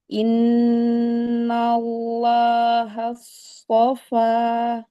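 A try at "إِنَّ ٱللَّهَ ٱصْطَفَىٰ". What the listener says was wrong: kalau nggak ngangkat, kalau dia tidak mengangkat, ya diangkat pangkal lidahnya, maka pasti yang keluar huruf sin. Nah, itu huruf sin kan?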